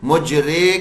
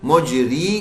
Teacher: مجرے کر دیا بڑی یا کی آواز ہو گئی، مجری کر دیا چھوٹی یا کی آواز ہو گئی · باقی چیزیں بعد میں ٹھیک کریں، سب سے پہلے یہ ٹھیک کریں کہ ہماری زیر کی آواز چھوٹی یا والی بننی چاہیے، بڑی یا والی نہیں